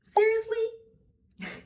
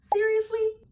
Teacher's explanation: The second thing I spotted native speakers do differently is the tone, especially in American English. The first one is a rising intonation, which is usually for questions.